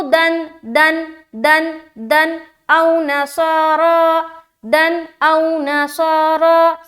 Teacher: बस दन जाहिर हुआ उसके बाद आगे निकल जाएंगे, बिल्कुल यहाँ पर रुकना नहीं है या नाक में आवाज को नहीं रोकनी